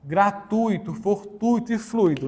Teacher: nesse caso nós temos o u e o i Mas quem é semivogal É o i